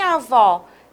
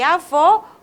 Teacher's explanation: Em avó, utilizamos o acento agudo com o timbre aberto. E avô, o acento circunflexo com timbre fechado.